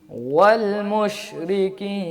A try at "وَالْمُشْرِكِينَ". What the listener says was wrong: مش پھر مش ہو گیا نا، یہ مجہول بھی ہو جاتا ہے مش اگر کہیں گے تو. ٹھیک ہے، مش یعنی جب تک ہونٹوں کو اچھی طرح گول نہیں کریں گے، واو کی ادائیگی صحیح نہیں کریں گے تو مش ہو جائے گا. ٹھیک ہے، مش نہیں کہنا.